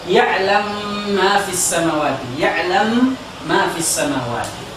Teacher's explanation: Seperti misalnya ya'lamu ma, ya. Di dalam riwayat As-Susi dia memasukkan mim ke mim · sebelum dimasukkan mim yang hidup ini dimatikan dulu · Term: idgham kabir